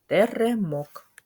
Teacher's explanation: твердий приголосний звук т у слові Теремок на початку слова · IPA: [Т]